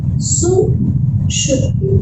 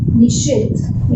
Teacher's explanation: यहाँ सा से पूर्व ई, छोटी ई आ रही है, ठीक है, ह्रस्व ई आ रही है, तो ये सा मूर्धन्य श में बदलेगा